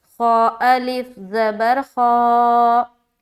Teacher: खा मोटे हरूफ में से है इसीलिए इसको मोटा करके पढ़ेंगे मुंह भर कर